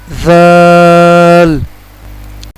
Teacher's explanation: زال کو زال پڑھتے ہیں، یہ غلط ہے، یہ زال ہے، اس کو ہم پڑھیں گے زال، اس کو ہم کھینچ کر پڑھیں گے۔ زال کا جو آواز ہے زبان کی نوک یعنی زبان کا اگلا حصہ اوپر والے دانتوں کی اندرونی کنارے سے ادا ہوگا